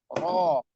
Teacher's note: Ro sifatnya takrir, lidahnya takrir atau ada getaran di lidah ya getaran atau suara yang berulang. Ro, dan punggung lidah kita ketarik ke dalam.